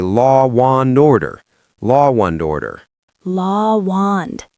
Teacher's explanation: If an American says law and order, we connect it using a W glide.